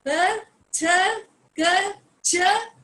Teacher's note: But when I am saying p th k ch, it is soft sound. That is why they are known as voiceless sounds. क्योंकि इसमें आपका एक तो lip movement कुछ भी नहीं है.